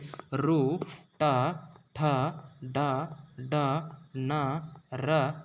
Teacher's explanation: ಮೂರ್ಧದ ಸಹಾಯದಿಂದ ಹುಟ್ಟುವ ಅಕ್ಷರಗಳು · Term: ಮೂರ್ಧನ್ಯ ಅಕ್ಷರಗಳು